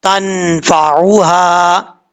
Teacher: نون ساکن کے بعد فا آ رہا ہے، ایک الف کی مقدار غنہ کر کے پڑھیں گے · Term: نون ساکن کا اخفا